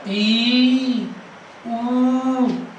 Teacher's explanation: संवृत स्वर में क्या होगा, मुंह जो है वो कम खुलेगा, मुंह का कम खुलना